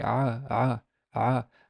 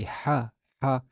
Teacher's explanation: try to say ah ah and you can notice the uh the vibration in your voice box well if you say ha ha you feel nothing